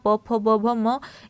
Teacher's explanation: प फ ब भ म ये ओट से होता है